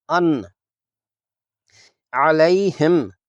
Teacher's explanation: نون کو ظاہر کر کے ایک حرکت کی مقدار میں پڑھیں گے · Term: اظہار